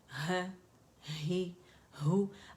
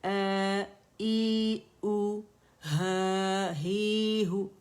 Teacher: ये अक़सुल हल्क से अदा हो रहे हैं, ठीक है, अक़सुल हल्क, ठीक है, वहाँ से हमने इसे अदा करना है फतहा है कसरा ही, हा दम्मा हु, है ही हु।